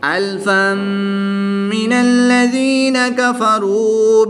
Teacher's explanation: یا ساکن سے پہلے ذال کے نیچے زیر ہے تو یا مدہ ہوگا۔ ایک الف یعنی 2 حرکات کے برابر کھینچ کر پڑھیں گے